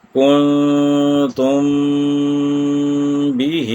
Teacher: میم ساکن کے بعد اگر با آ جائے تو وہاں پر ہم میم ساکن کو چھپائیں گے اور با کو ادا کریں گے، اور اس کی مقدار بھی 1 الف یا 2 حرکات ہوگی۔ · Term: اخفاء شفوی